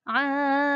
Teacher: Mat ini dibaca 5 harokat atau 2,5 alif. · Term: wajib muttasil